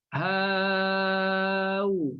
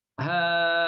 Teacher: Kita tashil, bukan bunyi hamzah betul-betul pada makhraj hamzah